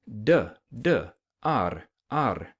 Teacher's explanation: your tongue contacts the roof of your mouth and blocks the air a little bit and then flaps out